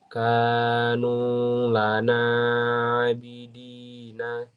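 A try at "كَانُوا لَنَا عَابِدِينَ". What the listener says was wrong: Panjang pendeknya, ada yang salah tuh.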